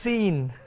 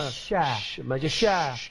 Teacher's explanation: Tafashi ni suara yang berhemburan angin apabila menyebutnya.